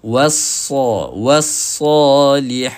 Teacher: Ah contohnya pada kalimah ni wa kena nipis wa dulu kemudian barulah sa jangan wasa jangan wa tak ada dalam Quran huruf wa yang ada huruf wau. So kita kena betulkan sebutkan wau itu secara nipis kemudian barulah kita boleh tebalkan sad itu.